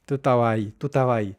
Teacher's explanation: La e, s de estabas se pierde y la b entre a y a de estabas casi se pierde.